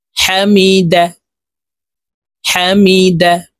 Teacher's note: হার মখরাজ হলকের মধ্যখান থেকে